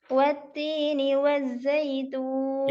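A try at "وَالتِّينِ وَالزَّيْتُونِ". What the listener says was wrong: Jadi dialirkan ya. Suaranya wazzaitun. Jadi jangan wajjaitun. Wazzaitun.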